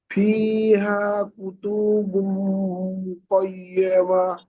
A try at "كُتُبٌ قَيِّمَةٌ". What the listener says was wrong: কুতু টানা হয়ে যাচ্ছে, কুতুবু, জলদি পড়তে হবে, কুতুবু কাইয়্যিমা।